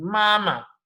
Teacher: आपने बस माँ शो करना है, देयर इज एन एग्जिस्टेंस. आपको उसको एक्सटेंड नहीं करना, उठाना नहीं है टोन को, गिराना उठाना, like you will not put anything, it's a neutral tone